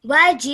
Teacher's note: So you say the G out, you stretch it again for 5 seconds, and then you have a slight jerk sound at the end because of the Hamza with the sukoon